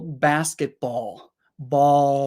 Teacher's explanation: when the L sound is at the end of the word, you're pushing your tongue down. Like the front of your tongue will be here.